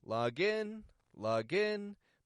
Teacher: Log in, but I'm raising my tone for the in.